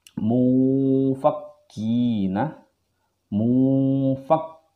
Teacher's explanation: Dan ikhfa awsat berada di tengah suara n dan juga suara ng, suara eng. Maka dia seakan-akan mengambang suaranya seperti ini, mufakkina, mufakkina, seperti itu.